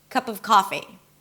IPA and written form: kʌpəv ˈkɑfi (cup of coffee)